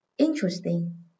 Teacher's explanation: Âm thứ hai chứa ơ, nên trọng âm rơi âm số 1, vì ơ không bao giờ nhận trọng âm.